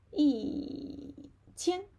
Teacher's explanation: together with first tone, e change to falling tone